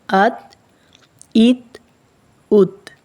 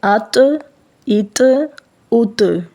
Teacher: تا کی آواز باریک، سخت اور بغیر قلقلہ کے ہوتی ہے، جیسے ات، ات، ات۔ اور طا کی آواز موٹی اور قلقلہ والی ہوتی ہے